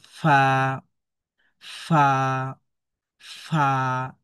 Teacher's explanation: নিচের যে ঠোট এই ঠোটের পেটে আমাদের উপরে দুই দাঁতের আগার লেগে যাবে। লেগে এই হরফটা উচ্চারণ হবে।